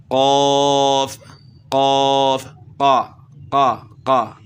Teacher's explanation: تو یہ والا حصہ جو ہے نا، یعنی زبان کی جڑ کا یہ وہ حصہ جو منہ کی طرف ہے اس کو ہی اوپر لگاتے ہیں دونوں حرفوں میں، تو اس لیے وہ قاف ادا نہیں کر سکتے۔ اگر یہ زبان کی جڑ کا وہ حصہ جو گلے والی سائڈ پہ ہے اس کو اوپر تعلق کے ساتھ جو ہے نا لگائیں گے تو موٹا قاف ادا کر سکیں گے